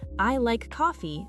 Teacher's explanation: the voice drops on coffee. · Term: statement melody